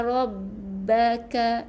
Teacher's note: ra bertemu dengan ba kena sabdukan jadi rabb bukan rab, bukan nipis ra kena tebal macam kita tulis RAW, ra.